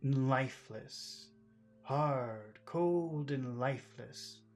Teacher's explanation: the word and just becomes n